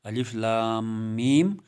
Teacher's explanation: لام کا نام لیتے وقت 5 الف کے برابر طول دینا ہے، کھینچنا ہے